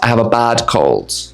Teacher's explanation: What I actually said is I have a bad cold. When we have bad and the next sound is k, it might sound like bag.